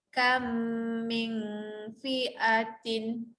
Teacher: kita masukkan bunyi mim pertama ke dalam mim yang kedua. Okay, yang berbunyi adalah mim kedua, bukan mim pertama. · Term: idgham mithlaini